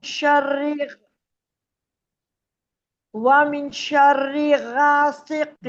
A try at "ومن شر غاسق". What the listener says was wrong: غا نہیں ہے، غا. غین کو موٹا پڑھیں، غین